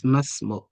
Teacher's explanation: We don't say ma ismuka because this Hamza is Hamza to Wasl. And it's sitting between the ma and the s.